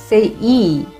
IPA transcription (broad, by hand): i: